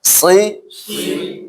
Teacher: Si, ditahan ya, ujung lidah sama pangkal gigi yang bawah ya. Si, sama angkat sedikit.